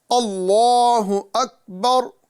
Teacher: اکبر بولیں گے تو یہاں غیر قلقلہ میں قلقلہ واقع ہوگا، لہذا قلقلہ کرنے سے بچیں، اور ساتھ ہی ساتھ آخری میں جو را ہے ساکن کرتے وقت اس کو پر کریں